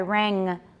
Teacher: Can you feel the back of your tongue touching your soft palate? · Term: velar